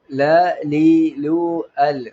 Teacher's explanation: നാവിന്റെ തലയുടെ അരുഭാഗം മേലെ മുൻപല്ലുകളുടെ ഊണിമ തട്ടിയിട്ട് ഉച്ചരിക്കണം